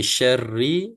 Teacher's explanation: Jadi syarri, ra itu macam saya sebut sebelum ini, ra itu mestilah bergetar ya, dia punya sebutan ya